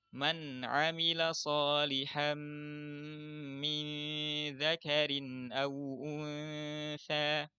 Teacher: di nun sukun bertemu ain. Nun sukunnya jelas dengan tetap memperhatikan sifat dan makharijul hurufnya. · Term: izhar halqi